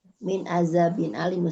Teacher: ujung lidah bertemu dengan gigi seri atas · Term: huruf zal